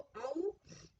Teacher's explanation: गले से निकलते हुए भी होठ थोड़ा गोलाकार आकृति बनाते हैं, तब हम ओ औ का उच्चारण करते हैं। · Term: कंठोष्ठ्य